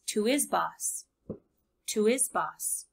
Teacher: the H on his is gone and it's pushed together with the preposition